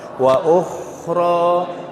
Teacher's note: Huruf kha ini adalah huruf yang rikhwah, mengeluarkan udara dengan lepas.